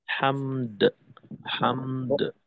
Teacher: শেষে হায়ের কলকলাটাকে পূর্ণ করব